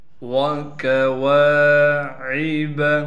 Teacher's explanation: واو کے بعد الف ہونے کی وجہ سے واو کو بھی ایک الف کی مقدار کھینچیں گے، کاف کو بالکل باریک کر کے پڑھیں گے، عین کو صاف کر کے گلے سے نکال کر پڑھنا ہے۔